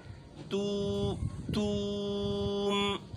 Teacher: آخر میں میم ہے، ساکن ہے، یہاں پر آواز جو ہے ناک میں جائے گی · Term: میم ساکن